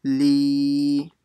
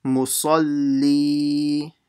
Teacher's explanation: So that means the ya sakin will stretch the second lam